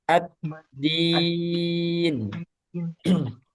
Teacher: dal jangan sampai ada udara karena jahar. Tidak ada udara. Tertahan udaranya.